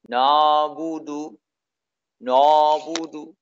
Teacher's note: Mengucapkannya dengan suara mengambang. Mengucapkan ain ini dengan suara mengambang. Yang lebih menyerupai alif yang ditebalkan. Sehingga suara, saking mengambangnya suara ain ini, lebih menyerupai alif yang tebal.